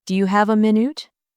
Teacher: Do you have a minute? The stress is on have and minute.